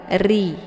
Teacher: makna takrir itu ada getaran di ujungnya, dan getaran itu tidak boleh lebih daripada 2 kali.